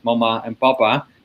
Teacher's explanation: But when last I looked into it, the leading hypothesis was basically that a sequence of 2 bilabial stops, whether nasalized or not, followed by an open unrounded vowel, is just very, very easy for an infant to say.